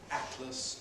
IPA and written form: ˈætləs (atlas)